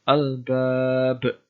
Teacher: al-bab qalqalah kubra karena ada huruf qalqalah berupa ba bersukun berada di akhir kalimat